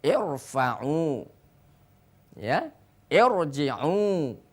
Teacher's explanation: irfa'u tidak boleh dibaca tipis, akan tetapi dibaca tebal